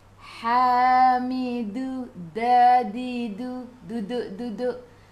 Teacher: Hujung lidah menyentuh belakang gigi, atas dan juga gusi. Kena sentuh tengah-tengah. Dua-dua kena sentuh. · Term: makhraj huruf dal